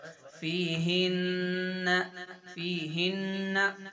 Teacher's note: गुन्ना करेंगे, आवाज को नाक में रोक के रखेंगे